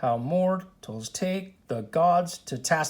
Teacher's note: there's a slight pause in between each foot so one two three four five feet unstress stress on the · So you can see when I say, My word, how mortals take the gods to task, there's a slight pause in between each foot. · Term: pentameter